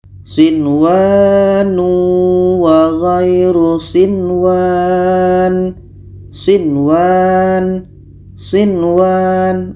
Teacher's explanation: maka ini dibaca jelas Nun jelas wau jelas sama dengan ini Nun jelas wau jelas dan dibaca tidak dengung · Dibaca jelas dan tidak dengung. Nun jelas, waw jelas, dan di sini tidak boleh didengungkan. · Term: izhar wajib